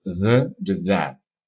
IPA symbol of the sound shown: ð